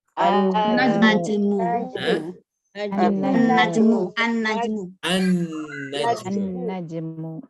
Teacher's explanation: Karena sa itu huruf samsiah maka dibaca jadi as-sukaru